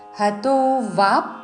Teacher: వ దీర్ఘము దాని మీద ఆఘాత